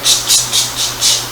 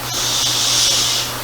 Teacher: Stops. So you have your ch, ch, ch, ch, ch. Stop versus your sh. Flow.